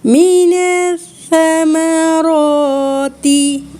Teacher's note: مِنَ الثَّمَرَاتِ اس لفظ میں تھا بہت ہی اہم ہے، مینس نہیں، سین نہ بنا دینا اور اس کو موٹا بھی نہیں کرنا، ثمر والا. مِنَ الثَّمَرَاتِ رِزْقًا لَكُمْ قل نہیں کرنا، رِزْقًا لَكُمْ.